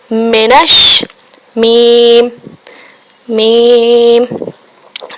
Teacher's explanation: मीम दोनों होंठों के खुश्क हिस्से से अदा किया जाता है। मिनश, दोनों होंठों को मिलाइए, मिनश, मीम मीम।